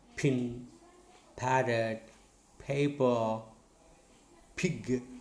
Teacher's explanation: This p is bilabial, voiceless, plosive.